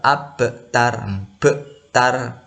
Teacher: Membacanya dipantulkan, tapi pantulannya sedikit ringan ya, tidak diberatkan. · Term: qalqalah